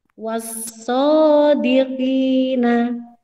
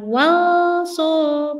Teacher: Jadi alnya tidak terbaca. Langsung masuk ke huruf sod. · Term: idgham syamsiyah